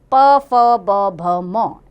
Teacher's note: इसमें ओष्ठ यानी कि होठों को स्पर्श करते हुए हवा बाहर आती है। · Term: प वर्ग